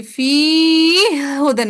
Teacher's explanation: या को डायरेक्ट हा से मिला दिया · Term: मुदगम